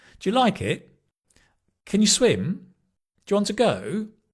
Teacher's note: Where it changes is in questions. So many questions typically uh will have a rising intonation.